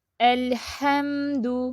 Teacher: نہ جاری نہ بند، بلکہ درمیانی کیفیت میں اس کو پڑھیں گے لام ساکن کو